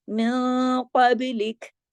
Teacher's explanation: بیچ میں با جو ہے وہ سکون میں آ گیا، تو اس پہ ہم نے کلکلا کر دیا